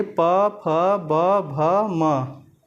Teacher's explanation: जब प वर्ग को आप उच्चारित करेंगे प, फ, ब, भ, म, तो आपको स्वतः ही महसूस होगा कि जो हमारे दोनों ओठ हैं वो आपस में स्पर्श हो रहे हैं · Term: ओष्ठ